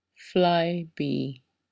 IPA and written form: ˈflaɪˌbiː (Flybe)